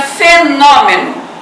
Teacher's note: eu vou fechar o som da vogal O na palavrinha fenômeno